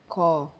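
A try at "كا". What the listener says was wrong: Ka. Stretch Alif. So in Alif Mudda we elongate Alif, we stretch Alif. And this in second short vowel, long vowel, vowel madha, we will elongate vowel. We will read it double. Like this.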